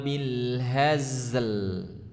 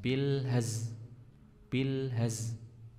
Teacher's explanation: huruf lamnya jangan sampai hilang, ya. Jadi bukan bil haz.